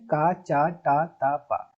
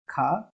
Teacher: अल्प प्राण में कम वायु बाहर निकलती है महाप्राण में ज्यादा वायु बाहर निकलती है